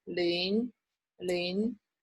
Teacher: A 0 is 零, is rising tone